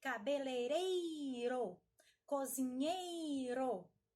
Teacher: Observem que essas palavras que normalmente têm o i, vem acompanhado do e e o i, elas são fortes. Estas sílabas são mais fortes.